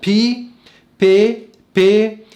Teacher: حرف الفاء في العبري اسمه بي بي، اللي هو يقابل في اللغة الإنجليزية حرف البي، البي المهموسة